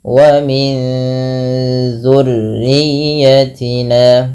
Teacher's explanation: Ikhfa yaitu menyamarkan bunyi suara nun kepada huruf setelahnya.